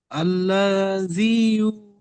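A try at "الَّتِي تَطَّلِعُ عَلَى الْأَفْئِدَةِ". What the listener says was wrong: আল্লাহ জি নয়, দেখেন আল্লাতি, হামজা লাম যাবার আল, লাম, পড়েন, আল্লাতি তাত্তালিউ, আল্লাতি,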